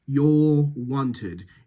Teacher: You really have to round those lips here. Your is that extreme rounding. Wanted is the sort of medial rounding.